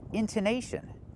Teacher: The stress is on the in, intonation, and the naish. The stress is not on the tone, and we don't pronounce it tone.